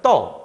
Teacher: 으라는 친구가 음성이기 때문에 어를 선택을 하는데 이때 으는 탈락돼 버립니다. 그래서 그냥 떠 이런 식으로 발음을 하게 돼요.